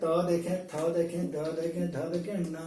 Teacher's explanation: दांत के पास हमारी जिह्वा जाकर टकराती है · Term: तवर्ग